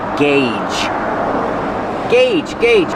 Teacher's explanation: Use the hard gggg and the long a like say and pay.